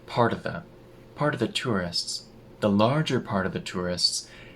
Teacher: the T in part turns into a tap. Part of the, and the F in of disappears.